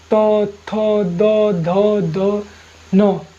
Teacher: ठीक है, इसमें दंते हो जाएगा तो थो दो धो धो न, न क्या हो जाएगा, दंते हो जाएगा। जो क्योंकि इसमें दांत भी लगता है, बोलने से इसे दांत लगेगा